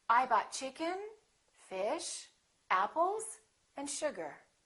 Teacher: When you have that rising intonation, people know that that's not the last element. Something more is coming.